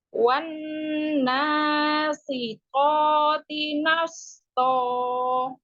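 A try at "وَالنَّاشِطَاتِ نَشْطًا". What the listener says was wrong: Huruf shinnya disempurnakan. Gitu ya, ada penyebaran udara, penyebaran suara, penyebaran suara ya. Wan nashitoti nashto.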